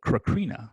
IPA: kɻəˈkɻinə